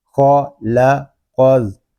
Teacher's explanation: یہاں خا اور قاف پر ہوں گے لیکن لام کو ہم باریک پڑھیں گے